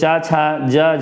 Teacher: च, छ, ज, इन चार वर्णों को स्पर्श संघर्षी व्यंजन कहते हैं।